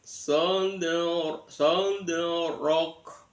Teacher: dalnya dal sukun terletak di tengah-tengah kalimat, dalnya dibaca qalqalah sughra, sold rock, ronya dibaca tafkhim, sold rock, kanya kaki kubak, artinya masih ada desisan angin sedikit, sold rock.